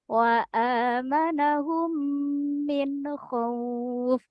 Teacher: Nah itulah contoh bacaan Idgham Mimi yakni cara membacanya dengung